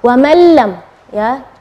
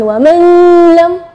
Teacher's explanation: Yang kedua adalah idgham bila gunnah, tidak ada dengung ya